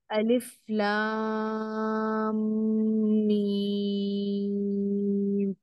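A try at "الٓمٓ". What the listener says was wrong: गुन्ना के चक्कर में फिर मत, थोड़ा सा कम हो गया। ये मीम जो है, चूंकि ये खैशूम है ना, ये खैशूम का हर्फ है ना, इसीलिए नाक में जाने से जो है आवाज खुल के समझ में नहीं आई।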